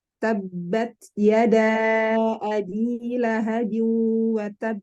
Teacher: Baik ketika huruf itu dalam keadaan sukun dan bertasdid, ya maksudnya baik qalqalah kubro dan sugro gitu ya. Nah, kalau jalur Madinah, pengucapan qalqalah itu lebih condong ke fathah. Jadi mengikuti harokat fathah.